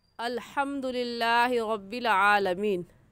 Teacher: इसमें जो हा है वो हलक के दरमियानी हिस्से से निकलती है।